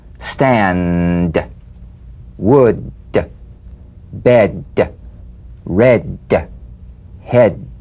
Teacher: Play this D drum beat on the springing away of the tongue from the upper gum ridge. Feel a pulsation in the tongue. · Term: Voiced tongue front palatal stop